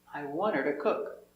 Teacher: The H is silent because the word her is not stressed. When you have a word with H at the start and the word is not stressed, the H is silent.